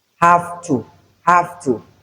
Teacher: This one is voiceless. So this the feature of the voiceless sound has assimilated the voice sound. So we have have to and not have to.